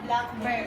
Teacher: So the stress is in the first syllable, which is the black. · For compound nouns, the stress is in the first part or in the first syllable.